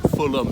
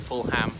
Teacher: usually if it's not the first syllable, it's just that the H is silent